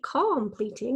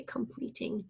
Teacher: we call a schwa sound we don't really say calm pleating we say completing and then we have the long e sound made with that